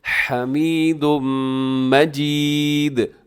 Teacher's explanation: آخر میں دال کو آپ نے قلقلہ کرنا ہے